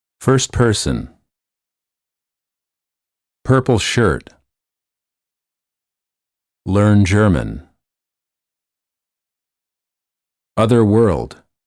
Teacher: the lips are slightly rounded, the tongue is tense and at a mid-level position, and the tip of the tongue is curled up and pulled back.